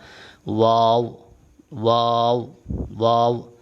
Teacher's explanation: واو واو دونوں ہونٹوں کو گول کرنے سے ادا ہوگا